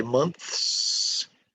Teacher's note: Did you say months and then hear the s at the end? S, unvoiced.